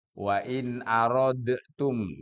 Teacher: mati bertemu dengan mati itu maksudnya sukun bertemu dengan ta itu dalnya menyatu dengan ta enggak usah pakai diqalqalah · Itu dalnya menyatu dengan tak, nggak usah pakai dikolkolah bacanya. Wa in aradtum, nggak usah, tapi langsung masuk namanya idgham mutajanisain.